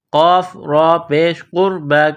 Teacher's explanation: قاف کو موٹا کرنا ہے، را کو موٹا کرنا ہے